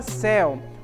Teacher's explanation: A palavra céu, observem que ela termina por um ditongo aberto